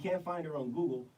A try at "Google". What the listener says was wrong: No, you just took your voice up. It's not Google. It's Google.